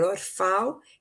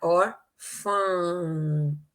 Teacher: não vai falar os pau ela vai falar órfão sai o som pelo nariz nasalizador